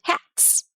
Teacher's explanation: if the word ends in an unvoiced consonant like t as in hat then it's going to make an unvoiced sound as in hats